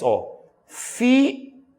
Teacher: Vai do som mais forte, que é a vogal, para o som mais fraco, que é uma semivogal. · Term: ditongo decrescente